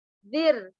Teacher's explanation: Ada ra sukun sebelumnya huruf berharokat kasrah, dinamakan tarqiqur ra, dibacanya tipis.